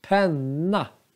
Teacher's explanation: vi har två korta vokaler. Men vi ser att n-et är långt. Alltså, det är konsonanten.